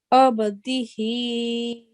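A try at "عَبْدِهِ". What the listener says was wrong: Okay, just a tiny bit longer. Abdihi.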